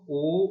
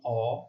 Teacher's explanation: ও উচ্চারণ করতে গিয়ে ঠোঁটের অবস্থান একটু গোল হয়ে আসছে, আর অ উচ্চারণ করতে গিয়ে তুলনামূলকভাবে একটু প্রসারিত হয়ে আসছে।